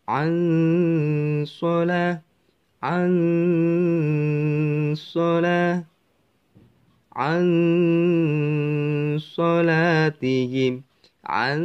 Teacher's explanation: lidah kita sudah membentuk huruf shad atau huruf yang ada di depan huruf nun sukun ini